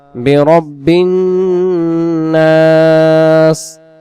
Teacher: এখানে নুন অক্ষরে তাসদিদ গুন্না হবে।